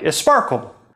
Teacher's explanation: If you're a Spanish speaker, you don't like that sp at the beginning of the word. Spanish fixes this by putting an e at the beginning of the word, so that s and p belong to different syllables. So a Spanish learner of English would probably say something like esparkle. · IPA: [ɛspɑɹkəl]